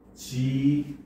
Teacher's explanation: 자음 축약이 일어납니다. 바로 거센 소리대기가 일어나죠. 즉 여기서는 기읍과 히읗이 합쳐져서 키읔이 되더라는 거죠.